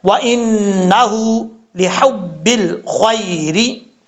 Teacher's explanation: اس کے بعد ہے وَإِنَّهُ لِحُبِّ الْخَيْرِ، یہاں نون کے اوپر شد ہے، یہاں پہ غنہ کریں گے ایک الف کی مقدار، آگے ہا کے اوپر الٹا پیش ہے، ایک الف کی مقدار لمبا کر کے پڑھا جائے گا